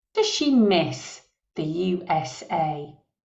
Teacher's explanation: the stress is on Miss and USA